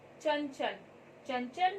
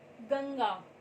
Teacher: अनुस्वार का उच्चारण करते समय वायु केवल नाक से निकलती है। इसका चिन्ह अक्षर के ऊपर बिंदु के रूप में किया जाता है।